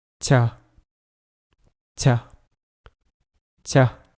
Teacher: the cha sound that it is a voiceless sound so you don't have to vibrate your vocal cords